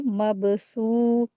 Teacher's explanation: बा के ऊपर सुकून लगा है, तो कलकला करके रीडिंग करेंगे इसको।